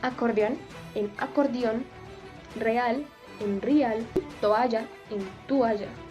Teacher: las vocales en hiato pasan a formar diptongos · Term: vulgarismos